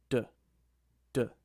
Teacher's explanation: And that's why we call d an alveolar sound, because your tongue makes contact with the alveolar ridge to produce the sound